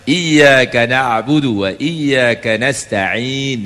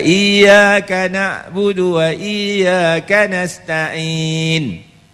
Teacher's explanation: Sebab orang Arab sebut Ain di tengah kongkong. Dia tak sebut di hidung